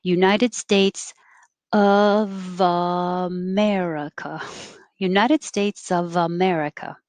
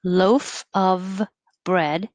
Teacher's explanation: keep your lips on your bottom teeth for the v and keep making it as you start the next vowel